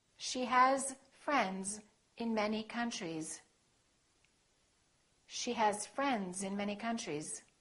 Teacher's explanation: when it's a voiced consonant followed by an S, the S sounds like Z. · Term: Z sound